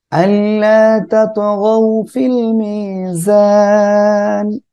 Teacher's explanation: ত কলকলা হবে, গ নরম করে পড়বেন , ফিল মি এক আলিফ টান, জান তিন আলিফ টান হবে।